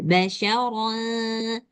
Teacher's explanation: ini ada ro, fathatain juga bacanya tebal